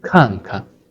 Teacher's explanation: The first is to stress, and the second, you give a gentle push. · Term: gentle tone